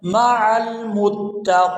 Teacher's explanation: یہاں پر وقف کریں گے تو وقف کی صورت میں نون جو ہے یہ ساکن ہو جائے گا مع المتقین وَأَنفِقُوا فِي سَبِيلِ اللَّهِ سین کو جب ادا کرتے